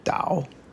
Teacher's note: can also be pronounced with the third tone